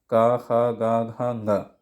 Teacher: इनका उच्चारण कंठ से होता है ना, कंठ वर्ण कहते हैं